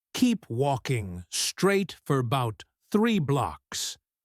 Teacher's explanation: About is often reduced to bout.